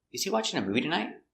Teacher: And the intonation goes up at the end.